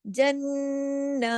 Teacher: अब देखिए जन्नातिन, जन्नातिन नहीं कहना, जन्ना, नून पे गुन्ना भी किया, नून पे तशदीद भी की, नून पे एक जो खड़ी जबर है वो भी पढ़ी, अलिफ के बराबर भी किया